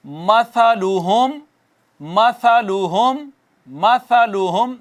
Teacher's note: ہوم میں میم ساکن ہے، میم ساکن آگے با میم نہیں ہے تو یہ اظہار شفوی ہے